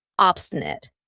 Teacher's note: notice how I pronounce it with a schwa at the end